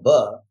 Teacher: it's a labial, it's a soft labial, B, with a long simple vowel, E.